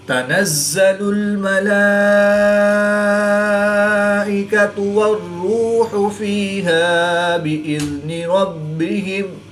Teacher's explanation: با حروف قلقلہ میں سے ہے اور یہ مشدد ہے، تو یہاں پر قلقلہ خوب جواؤ کے ساتھ کریں گے، اس کو قلقلہ کبریٰ بھی کہتے ہیں · را مشدد پر پیش ہے، تو را کو پوری یعنی موٹا پڑھیں گے۔ واو ساکن سے پہلے پیش ہے، تو واو مدہ 1 الف یعنی 2 حرکات کے برابر کھینچ کر پڑھیں گے۔ یا ساکن سے پہلے زیر ہے، تو یا مدہ 1 الف یعنی 2 حرکات کے برابر کھینچ کر پڑھیں گے۔ · کھڑے زبر کے بعد حمزہ اسی کلمے میں ہے، تو یہاں پر مد متصل ہوگی، 3 سے 5 الف تک کھینچ کر پڑھیں گے۔ را مشدد پر پیش ہے، تو را کو پوری یعنی موٹا پڑھیں گے۔